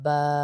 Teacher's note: होठ बंद होंगे क्योंकि होठों वाला लफ्ज है